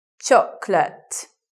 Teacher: So you may anticipate chocolate, but we don't say it that way. We just say it with two syllables. Chocolate, like that, with the stress at the beginning.